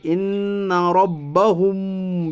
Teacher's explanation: میم ساکن کی آواز کو ناک میں چھپا کر غنہ کے ساتھ پڑھیے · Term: اخفاء شفی